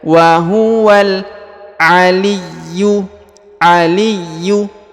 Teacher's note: sukun ini wahualwal wahualwal alifnya tidak dibaca ya wahuwal aliyyu aliyu huruf Ya ditahan dan ditekan ya dua harakat ada tanda tasdid Al aliyu aliyu huruf Yu langsung ke huruf lam yang berharakat